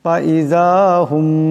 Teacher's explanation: এখানে মিম সাকিনকে গুন্না করিয়া পড়তে হবে, এক আলিফ পরিমাণ ইকফার গুন্না হবে।